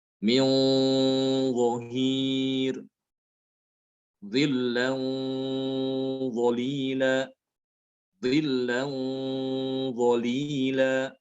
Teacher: Ini gunanya juga ikut tebal. Ya, gunanya ikut tebal karena huruf dha termasuk huruf tebal